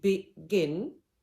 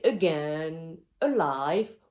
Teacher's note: usually the first syllable is unstressed, the second is stressed. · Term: iambic rhythm